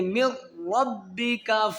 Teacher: میم کو را کے ساتھ ملائیں گے، نون نہیں پڑھیں گے